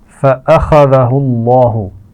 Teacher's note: خا کو موٹا پڑا جائے گا اور لام جلالہ ہے اس سے پہلے پیش آ رہا ہے تو آپ یہ بات جانتے ہیں، پہلے سیکھ چکے ہیں کہ لام جلالہ کو موٹا پڑا جائے گا